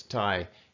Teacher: Flat tone, your normal voice.